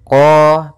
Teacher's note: isti'a maka lafal qnya lidah pangkal lidah kata terangkat qo kemudian tidak dimonyongkan bibirnya tapi dibuka saja untuk menyempurnakan daripada fathah huruf qahnya · makhraj daripada huruf qaf yaitu dari pangkal lidah kita, pangkal lidah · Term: sifat isti'a